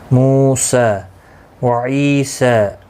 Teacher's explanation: عی یا مدہ ہے، ایک الف کی مقدار کے برابر کھینچ کر پڑھیں گے